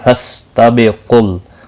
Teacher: قاف مستعلیہ ہے، پر پڑھا جائے گا